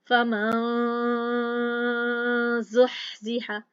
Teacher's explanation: अब हमने क्या किया है, जा के मखरज के होठ फैलाए मुस्कुराने वाले अंदाज से, मीम के बाद जा के मखरज के बाद पास आकर हम खड़े हो गए हैं और हमारी आधी आवाज नाक में से आ रही है